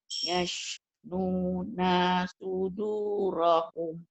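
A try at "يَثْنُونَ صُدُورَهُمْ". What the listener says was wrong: Naknya pendek langsung ke so. Yathnuna sudurahum.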